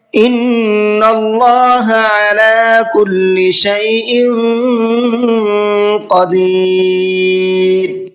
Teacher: ان کے نون میں غنہ کریں گے، اس لیے کہ نون پر تشدید ہے اور نون پر تشدید ہوتی ہے تو نون میں غنہ کر کے پڑھتے ہیں، اور اللہ کے لام کو منہ بھر کے پڑھیں گے، پر کر کے پڑھیں گے، اس لیے کہ اللہ کے لام سے پہلے زبر ہے۔